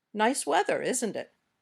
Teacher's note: we often use this falling intonation when we're just making conversation